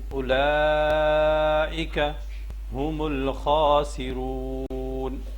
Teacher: یہ واو ساکن ہے اور واو ساکن سے پہلے پیش ہے، حروف مدہ ہے، اس کو ایک الف کے برابر لمبا کرنا ہے